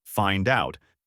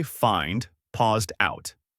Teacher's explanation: For example, when a native speaker says the phrase find out, they don't say find, paused out. The final D sound often links directly to the O sound. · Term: connected speech